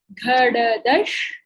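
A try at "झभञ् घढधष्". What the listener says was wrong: So this should be the fourth dha and fourth dha. Jabhagadadash. Jabhagadadash. No, this is Jabhain Ghadadash and then Jabhagadadash.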